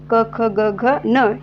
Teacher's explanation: जिभेचा जो मागची बाजू आहे त्याचा वापर होत आहे या कंठवर्णांचा उच्चारामध्ये